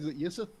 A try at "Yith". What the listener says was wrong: It's Yith. Or else it comes through. Yith. Yith.